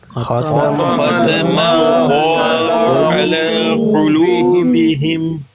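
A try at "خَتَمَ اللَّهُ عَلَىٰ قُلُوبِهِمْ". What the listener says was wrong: قو قو قاف پر پیش ہے. قلوبہم نہیں کرنا. قلوبی اس کا مطلب ہے ہونٹوں کو صحیح گول نہیں کیا.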